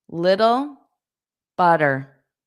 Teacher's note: Butter, der. So for little and butter, those two T's become soft D's.